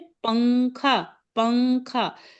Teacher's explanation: जबान आपकी नून के मखरज पर नहीं जाएगी और नाक में से गुन्ना वाली आवाज आएगी। तो इस तरह से आप इख्फा की आवाज को मतलब इख्फा की आवाज को निकाल पाएंगे इंशाल्लाह।